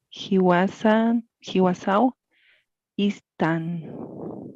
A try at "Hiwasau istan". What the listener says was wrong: Ahora tienes que hacer notar ist, ¿no es? Explosivo. Hiwasau istan. Istan, ¿no es?